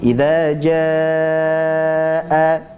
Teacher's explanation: Kata idza jaa maka itu dibaca sebagai mad wajib muttasil, hendaklah kita panjangkan sepanjang 4 atau 5 harokat.